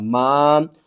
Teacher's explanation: الف سے پہلے زبر ہے، حروف مدہ ہے، 1 الف کے برابر آپ نے کھینچ کر پڑھنا ہے